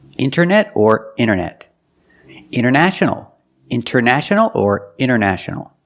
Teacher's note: You have NT in the middle, the T is silent.